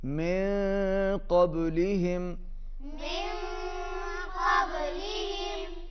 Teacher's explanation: इख्फा होगा, आवाज़ नाक में जाएगी